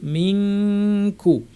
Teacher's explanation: জিব্বার সবচেয়ে পেছনের অংশ যেটা, তার থেকে একটু সামনে জায়গাটা, এটা হচ্ছে কাফ, উপরে তালুতে লাগিয়ে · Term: কাফের ইখফা